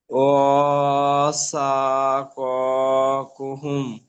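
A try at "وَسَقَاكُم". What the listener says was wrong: কুহুম নয় কুম, কুম, কুম, হ্যাঁ, ও সা ক কুম, কুম, ও সা ক কুম,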